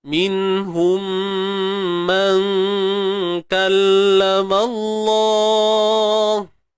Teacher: Sembunyikan nun. Jangan sebut nun tepat pada makhrajnya. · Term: ikhfa haqiqi